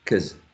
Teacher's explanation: The short O, right, is reduced to a schwa. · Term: reduction